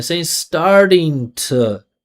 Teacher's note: put the energy in the vowel sound, and then come back down for a flap T. Why? Because it's not stressed.